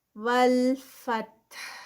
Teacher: فتح تا کا ہمس اور ساتھ میں ہا کی ساؤنڈ، یہ دونوں اکٹھے آئیں گے